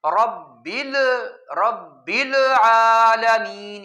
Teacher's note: دوسری بات یہ ہے کہ العالمین میں لام پر جو ہے نا، وہ پہلے لام جو ساکن ہے اس پر بعض لوگ قلقلہ کرتے ہیں، جھٹکا دیتے ہیں، وہ پڑھتے ہیں رب العالمین، یہ بل نہیں ہے، تو اس پر پیش بنانا یا جھٹکا دینا یا قلقلہ کرنا یہ ٹھیک نہیں ہے.